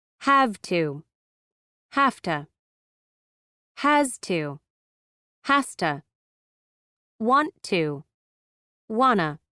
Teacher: Auxiliary phrases with modals or other helping verbs are commonly reduced. The vowels in to and have reduce to schwa, and certain consonant sounds are changed or dropped. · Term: reduced auxiliary phrases